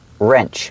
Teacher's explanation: The W is silent. So it's pronounced with the R sound first. Wrench. That's a little wrench.